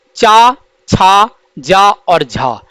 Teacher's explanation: चा, छा, जा और झा, इन चारों वर्णों को स्पर्श संघर्षी व्यंजन कहा जाता है।